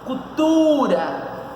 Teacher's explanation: qual é a posição da sílaba tônica cultura tá na penúltima